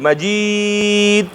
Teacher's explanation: ها اوس په دې دال کې آواز یې جګ ده ځکه چې مجهوره ده، فورا بند شو ځکه چې شدیده ده، باریک شو ځکه چې مستفله منفتحه ده